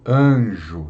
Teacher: Porque o N é uma consoante nasal, né? Então, a tendência é a vogal que a precede também ser nasalizada